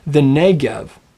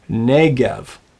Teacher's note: The accent falls on the first syllable. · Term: double segolet